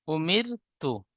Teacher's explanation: র সাকিনের ডান দিকে জের এসেছে, তাই রকে বারিক করে পড়বো।